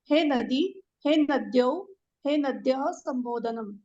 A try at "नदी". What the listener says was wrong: Samyak.